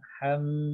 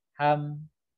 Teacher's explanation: Ada Nah, inilah yang membedakan antara mim sukun dengan huruf m. Yang membedakan mim sukun dengan huruf m adalah mim sukun itu ada suara yang ngalir sedikit.